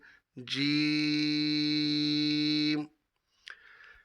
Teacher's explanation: جیم زبان کے درمیان، تالوں کے درمیان سے ادا ہوتا ہے، اس کو حرف شجریہ کہتے ہیں۔